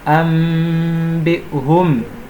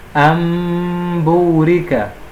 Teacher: este Nun, na prática, o Nun altera para Mim. Nós pronunciamos como se fosse um Mim, como se tivesse Mim. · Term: Iqlab